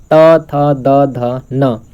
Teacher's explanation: इसका उच्चारण स्थान दंत है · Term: त वर्ग